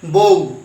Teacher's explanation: অ এবং রস্যু এই 2টি ধ্বনির সমন্বয়ে ঔ তৈরি হয়েছে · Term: যৌগিক স্বরধ্বনি